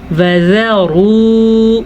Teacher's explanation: را پیش واو رو، وذروا، را کو پر پڑھنا ہے کیونکہ را پہ پیش ہے